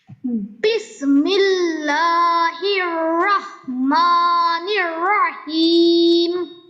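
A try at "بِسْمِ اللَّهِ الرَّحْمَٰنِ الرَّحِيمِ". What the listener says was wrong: হিম টানটা যেন আরো একটু বেশি হয়, জানি আপনার হয়তো শ্বাস একটু কম এখন বয়স হিসাবে, তো চেষ্টা করা আর কি।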